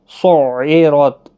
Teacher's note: عین کو ادا کرنا ضروری ہے، ایسا نہ ہو کہ حمزہ نکل جائے گا. را پر پڑھنا ہے، زبر کی وجہ سے تا ساکن ہی رہے گا.